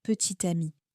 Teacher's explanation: Le T de petit, normalement silencieux, revient parce qu'ami commence par une voyelle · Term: la liaison